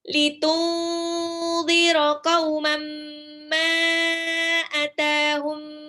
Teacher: Qaumam ma itu juga tanwin ketemu mim. Ma-nya harus 4 harokat paling enggak.